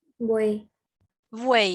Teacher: En posición intermedia está la vocal abierta y al lado están las vocales que son cerradas. Ninguna de las vocales cerradas son acentuadas. · Dicen en una sola emisión de voz las 3 vocales. Entonces es un triptongo.